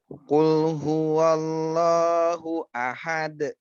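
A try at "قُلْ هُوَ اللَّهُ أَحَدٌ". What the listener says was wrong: Lamnya tipis. Qul ya. Qul huwallah. Lamnya tebalkan sedikit. Allah. Allah. Jadi jangan terlalu ke dalam, jangan yakul.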